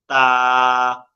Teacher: জিহ্বার আগা উপরে দুই দাঁতের গোড়ার সঙ্গে এক আলিফ টানতে হবে।